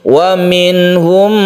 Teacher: Wa minhum membacanya izhar dan tidak berdengung.